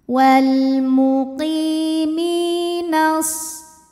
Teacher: harakat Wal [Musik] muqimi Mi ini adalah Mad Thobi'i zahiri sebab huruf Ya Sukun didahului baris kasrah maka huruf mim kita panjangkan dua harakat